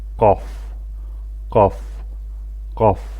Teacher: Belə ki, bizim dilimizdə bu formada, yəni qaf şəklində səslənir. Ərəb dilində isə daha kobud formada və daha dərindən qaf, qaf, qaf şəklində tələffüz edilir.